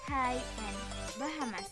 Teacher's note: say this word and notice how you are not actually constricting or blocking airflow for this H sound. You are just exhaling a little bit harder than you would for a normal vowel sound in transition to be following vowel sound.